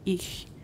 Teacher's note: voiceless palatal fricatives occur in german in words such as ich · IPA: ç